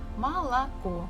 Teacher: the stress falls at the last syllable, so the first two O's we must read or say as A.